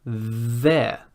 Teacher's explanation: the tongue is just a little bit out of the mouth but still between the teeth i have not clamped quite so hard because you need that room for vibration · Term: voiced th